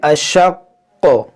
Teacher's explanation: اس پہ جو پیش ہے اس کو ہم ساکن کر دیں گے، لیکن جو یہ تشدید ہے ہم اس کو باقی رکھیں گے، اور یہ حروف مستعلیہ ہے اور حروف قلقلہ بھی ہے، تو جب ہم یہاں ساکن کریں گے تو جب قاف ساکن ہوگا تو اس میں قلقلہ بھی ہوگا، جیسے اشق، اشق، اس طرح سے ہم یہاں وقف کریں گے۔